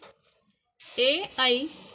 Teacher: ए ऐ का उच्चारण स्थान कंठ और तालु है।